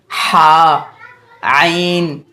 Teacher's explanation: हा और आइन दरमियानी हिस्से से अदा होते हैं। जैसे हा, आइन, ये दोनों आवाज़ें दरमियानी हलक से अदा होती हैं।